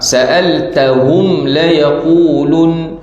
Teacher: Jangan baca dengan saktah, putus, sambung. Walaupun mim mati, dia memang ada bunyi hidung.